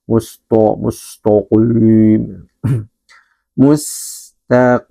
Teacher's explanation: huruf ta harus tetap tipis. Jangan sampai tebal mengikuti huruf qof.